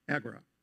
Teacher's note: The title of the work is Agora, with the accent on the first syllable.